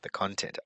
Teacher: the stress on the first syllable is the noun